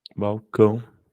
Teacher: é a última que é a tônica Então essa palavra é uma palavra oxítona